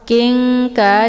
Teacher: nunnya disamarkan sambil siap-siap masuk ke huruf kaf. Nah, untuk ikhfa ab'ad ini kalau dibandingkan tingkat kesamaran dan dengungan itu lebih ke dengung, ya, karena dia sifatnya adalah berjauhan.